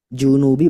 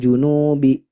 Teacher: junubi langsung, tidak dibaca panjang